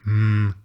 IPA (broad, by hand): m